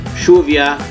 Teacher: Because I know that word has a double L in it. Yes, in some parts of Argentina we pronounce the double L as a sh.